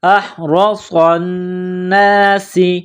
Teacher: صاد میں سیٹی کی آواز پیدا کرنی ہے، صاد کو موٹا کرنا ہے ، صاد کو نون کے ساتھ ملانا ہے، نون مشدد ہے، · ساتھ ملانا ہے، نون مشدد ہے، غنہ کریں گے، احرص الناس، سین میں سیٹی کی آواز پیدا کرنی ہے، سین کو باریک کرنا ہے · صاد کو نون کے ساتھ ملانا ہے، نون مشدد ہے، غنہ کریں گے